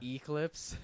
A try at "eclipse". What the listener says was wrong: an eclipse. You're putting the wrong emphasis on the wrong syllable.